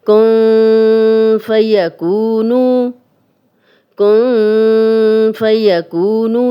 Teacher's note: آگے فا ہے، نون ساکن اور تنوین کے بعد اگر اگلا حرف فا ہوگا تو یہ اکفا کا قاعدہ ہے اور تنوین کے بعد بھی اگر فا ہوگا تو یہ اکفا کا ہی قاعدہ ہے اور غنہ اسی طرح کریں گے، تھوڑا مسوڑوں سے زبان کو نیچے رکھیں گے، نون کی آواز کو اور تنوین کی آواز کو تھوڑا چھپا کر غنہ کریں گے